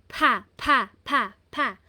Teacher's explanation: ito ay aspirated ha. Kaya ang bigkas po niya ah mahangin po. May pa. May hangin.